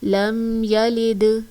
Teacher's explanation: دال پہلے سے ساکن ہے، اس پر قلقلہ کریں گے